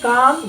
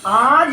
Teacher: آج میں الف کھینچ کے پڑھا جا رہا ہے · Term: الف ممدودہ